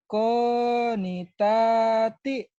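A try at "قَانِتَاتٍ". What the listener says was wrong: Mas belajar lagu ya mas ya. Masa suaranya lempeng lurus aja.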